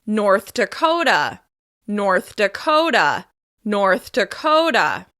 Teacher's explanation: we're stressing the second word, and in this case, it's on the second syllable.